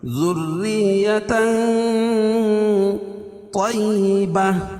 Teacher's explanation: حروف اخفا کی 15 حرفوں میں سے کاف ہے، تو یہاں ناک میں آواز کو چھپا کر پڑھیں گے